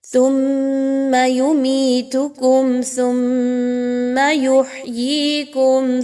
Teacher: ثا اور میم مشدد آپس میں مل رہی ہے، غنّے کے ساتھ دونوں حروف کو ملایا جائے گا